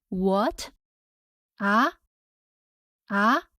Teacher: The second tone rises from the low pitch to high pitch, the same as the English question intonation.